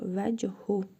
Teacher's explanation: Hə zamirindən əvvəl cəzm olduğuna görə hə zamirini qısa şəkildə oxuyuruq.